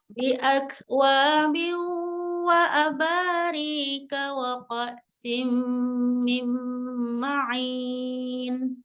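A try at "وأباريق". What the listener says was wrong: Riqa, ya tebalkan lagi kofnya. Tebalkan kofnya, tidak rika, tidak ditipiskan, tapi ko, kurang tebal kofnya. Bi akwabi wa abariqa wa ka'sim min ma'in. Riqa wa ka'sim, bukan rika. Tidak al-hams, al-jahru.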